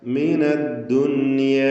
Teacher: സക്കിനത്തായ നൂൻ ശേഷം യാ ഒറ്റ പദത്തിൽ വന്ന സന്ദർഭമാണ്. ഇൽഹാർ മുത്ലഖ് എന്ന നിയമമനുസരിച്ച് നൂനിനെ അല്പം പോലും മണിക്കാതെ വെളിവാക്കുകയാണ് വേണ്ടത്.